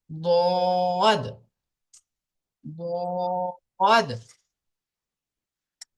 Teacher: দোয়াত উচ্চারিত হয় জিবের কিনারা এবং তার বারাবার উপরের মাড়ির দাঁতের গোড়ার সাথে লাগিয়ে উচ্চারিত হয় দোয়াত। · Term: দোয়াদের মাখরাজ